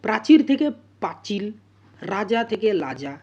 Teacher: কি র থেকে ল প্রাচীর থেকে প্রাচিল রাজা থেকে লাজা এখানে র টা ল তে পরিণত হয়েছে